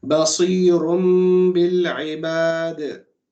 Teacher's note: noon of the tanween is changed into a meme because of the ba after